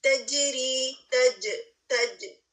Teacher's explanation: جیم پر آواز bounce back ہو رہی ہے